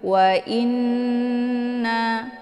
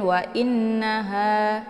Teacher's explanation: Nun yang bertasydid dinamakan dengan ghunnah musyaddadah ya. Jadi ghunnah musyaddadah ini cara bacanya ditekan, kemudian ditahan suaranya 2 harakat sambil dileburkan suara ke dalam huruf na ya, ataupun didengungkan. Wa inna ditekan kemudian ditahan dulu, jangan langsung dilepas ya, jangan wa innaha, itu bacaan yang salah karena nunnya harus dibaca dengung.